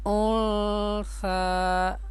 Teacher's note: اگر ہم یہاں پہ غنہ کرتے تو پھر ہم انثا، یہ آواز ناک میں جا رہی ہے، اور اگر ہم اخفاء پڑھیں گے تو انثا، ناک میں آواز چھپائیں گے